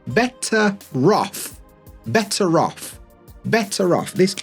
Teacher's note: However, when we want to link words together, we want to link these sounds together because we would get rid of this R, we get better off. But when we want to link them together to make it easier, we put that R back. This is called linking R and we get better off.